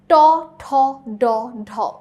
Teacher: ট ঠ ড ঢ উচ্চারণ করার সময় জিভ টাচ করছে মূর্ধাতে।